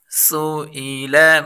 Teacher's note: ای، سوئی، لام زبر لا، سئیل، تینوں باریک حروف ہیں اور سین اس میں تیزی والا حروف ہے، اس میں سیٹی لگائیں گے